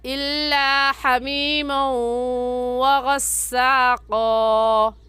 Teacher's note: واو دیکھنے میں ایک ہے اور پڑھنے میں 2 مرتبہ پڑھا جاتا ہے، ایک مرتبہ میم کے ساتھ ملا کر اور دوسری مرتبہ خود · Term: ادغام